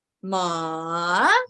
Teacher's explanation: it starts from low to high